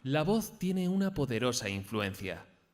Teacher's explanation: le va a escuchar básicamente para intentar conseguir modificar esa monotonía vamos a intentar comenzar la frase en un tono agudo y acabar en grave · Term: entonación